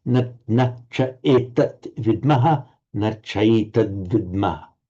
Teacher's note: And again by sandhi, the final t, etat on its own, followed by the voiced consonant v, and it becomes a d